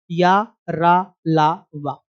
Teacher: ये चारों व्यंजन सघोष है, सघोष के साथ साथ अल्प प्राण भी है। या का उच्चारण स्थान तालु है, वा का उच्चारण स्थान दंतोष्ठ है, रा और ला का दंत या वत्स। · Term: अंतस्थ व्यंजन